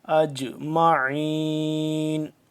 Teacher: جیم ہے ساکن تو اس کو ہم قلقلہ کریں گے ، اجمعین، خالدین، خالدین فیہا، لا یخفف، لا یخفف عنہم العذاب،